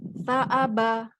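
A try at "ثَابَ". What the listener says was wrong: sa. Saaba, bukan ta ya. Sa. Sa ujung lidah.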